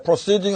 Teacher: 그래서 process가 액센트가 가니까 아가 되는 거예요. 그래 뒤로 가면 세딩 할 때는 어가 되는 겁니다.